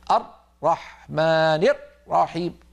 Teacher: مثلا نسمع من بعض الناس المبتدئين يقول الرحمن الرحيم لما ينطق الراء يقفل مخرجها جدا ويقطع الصوت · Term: حصرمة الراءات